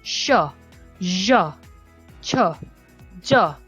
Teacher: made by raising the front part of the tongue to the hard palate